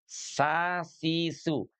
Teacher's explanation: Kalau sin ujung lidahnya di belakang gigi seri bawah ya